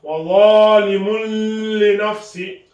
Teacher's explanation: On appuie un peu pour la shadda, mais on ne fait pas de ghunna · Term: idgham sans la ghunna